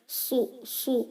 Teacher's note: You have to do isti'ala by rising the last part of your tongue and make it heavier.